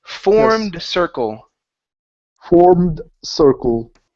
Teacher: go straight to the D. The E will not make a sound.